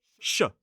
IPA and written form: ʃə (shire)